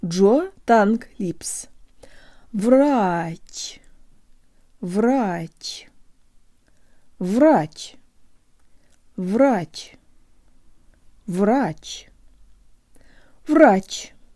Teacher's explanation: if I slow it way down you can hear the rise at the very end